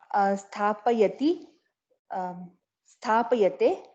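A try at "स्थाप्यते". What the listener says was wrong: No. Again, you have to delete this yakara and start. Stop plus yate. Stapyate.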